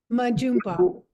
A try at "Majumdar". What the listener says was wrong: Majumdar. There is an R at the end, and every letter is pronounced